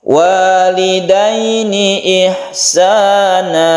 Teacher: Kalau sukun ya sebelumnya fathah ini sebut mad lain, satu alif saja. Walidaini sepertinya tidak panjang, tapi pada hakikatnya ini adalah panjang karena kita melemaskan antara fathah dan iya.